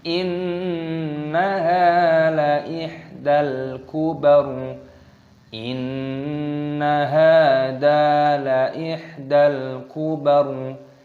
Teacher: nun tasdid dibaca gunnah berdengung, ditasdid, ditekan dan didengungkan. Haknya panjangkan, ada tanda alifnya matobi'i.